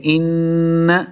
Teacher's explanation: نون مشدد ہے، غنہ کر کے پڑھیں گے